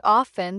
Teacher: In words like often, the T is often silent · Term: silent letters